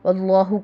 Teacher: واللہ کو پر پڑھیں گے کہ ما قبل فتحہ ہے